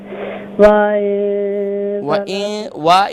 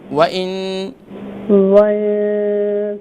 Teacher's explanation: वा इन नहीं है, वाव को शॉर्ट साउंड करेंगे